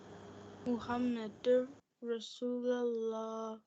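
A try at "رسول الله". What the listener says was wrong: Rasulullah. Not lallah. Lullah. Rasulullah.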